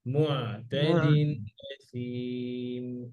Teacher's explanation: আইনটা একটু গলার ভিতরে, মুআতাদিন গলার মাঝখান থেকে